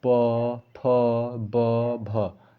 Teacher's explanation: हमारा लिप जो होता है यानी ओठ आपस में क्या हो रहे हैं, चिपक रहे हैं, तो इसी को हम लोग क्या कहते हैं, ओष्ठ व्यंजन।